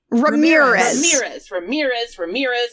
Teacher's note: emphasis on the second syllable